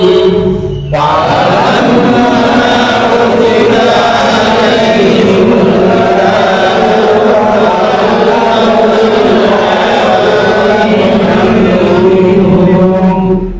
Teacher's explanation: ini mim tasydid dibaca guna ukuran guna atau mendengungnya 2 harokat